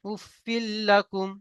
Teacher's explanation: তানবিন ও নুন সাকিনের পরে যদি র অথবা লাম আসে, তাহলে তানবিন ও নুন সাকিনের আওয়াজকে বিনা গুন্নায় জাহির করে মিলিয়ে পড়বো